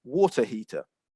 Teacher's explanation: And so from the UK, I would pronounce this as a water heater. Okay, so you're not hearing that r sound at the end. Essentially, that sound is being dropped. But if you were from the United States, you'd be much more likely to pronounce it a water heater.